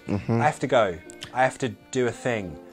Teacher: I usually drop the H when it's I have to.